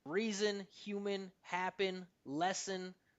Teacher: Those unstressed syllables that finish in N, the N eats up the vowel. · But this one makes sense to drop the T because what's happening is that like the unstressed syllable finishes with an N, and this creates something called a syllabic consonant, and that means it just wipes out the vowel